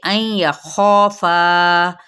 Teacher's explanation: خوف حروف مستعلیہ میں سے پر کرتے ہوئے الف بھی اس کے ساتھ ہی تابع ہو جائے گا اور موٹا پڑھا جائے گا